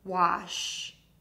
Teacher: To say wash, start by saying W by puckering your lips. Add the short ah by opening your mouth wide. End with the SH sound. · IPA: /wɒʃ & wɒtʃ/